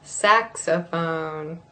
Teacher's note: That first O is a schwa.